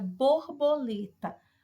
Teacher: o lê é a sílaba tônica